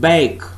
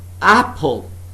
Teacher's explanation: In the first word, it's been used as a diphthong. But in the second word, it has been used as a short vowel sound.